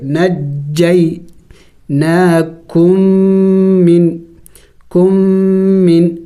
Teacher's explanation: اور قاعدہ اس کے لیے یہ ہے کہ جہاں یہ ہے کہ یہاں پہ ادغام ہو چکا ہے، یعنی میم کا میم میں ادغام ہو چکا ہے، ایک دوسرے میں داخل ہو چکے ہیں، تو یہاں پہ ہم ایک میم کو پڑھیں گے